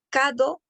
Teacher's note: no puede decir la R, entonces dice cado en vez de carro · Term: ausencia de vibrantes